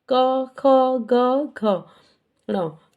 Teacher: यानी क वर्ग का उच्चारण स्थान कंठ है।